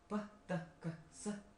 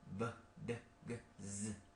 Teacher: The first one is voiceless. The second one is voice.